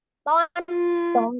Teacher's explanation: Ujung lidah menyentuh ke pangkal gigi seri.